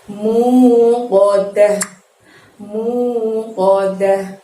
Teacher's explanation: di sini ada huruf qaf, bukan kaf. Jadi kamu mengucapkan o-nya menggunakan pangkal lidah kamu hingga menyentuh langit-langit ya